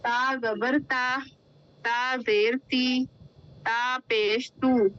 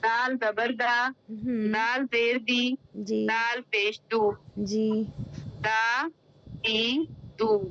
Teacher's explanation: تا اور دال یہ لائٹ ساؤنڈ والے رہتے ہیں. اس کو حروف مستفیلہ بولتے ہیں.